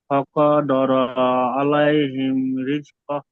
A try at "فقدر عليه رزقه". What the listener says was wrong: ফাকাদা র টান হয়ে গিয়েছে, আর আলাইহি ও টান হয়ে গিয়েছে। এ দুটো টান হবে না। ফাকাদার আলাইহি রিজকাহ। জলদি জলদি পড়তে হবে, কোনো জায়গায় টান হবে না।